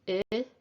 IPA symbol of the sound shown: ɪ